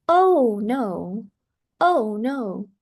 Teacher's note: to show strong feeling the voice go up very high before it falls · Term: inonation in exclamations